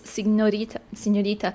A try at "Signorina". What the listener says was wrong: Signorina. With an N.